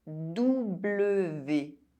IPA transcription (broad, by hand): du.blə.ve